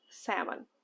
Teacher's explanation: Это сеЛмон. Букву L мы не читаем. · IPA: /ˈsæm.ən/